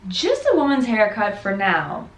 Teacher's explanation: notice that we stress haircut. We're not stressing just or women's because we already know it's a woman.